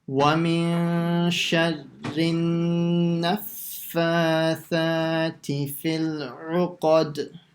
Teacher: make sure the fa and the tha, you stretch them the same amount. So one shouldn't be longer than the other.